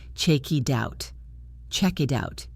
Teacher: The K links to the I. The T flaps and links to the O.